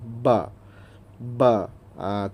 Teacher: Ba ni makhraj huruf dia ialah dari dua bibir.